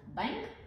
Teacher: звукът н последвано от г или к се произнася носово